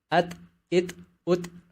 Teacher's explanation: Huruf ta mungkin mirip bunyinya dengan huruf T, tapi huruf ta punya sifat hamas, terutama akan terdengar ketika huruf ta dalam kondisi sukun. Contoh, at, it, ut.